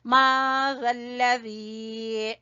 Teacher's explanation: जाल को जबान की नोक और सामने वाले दो दांतों के सिरे से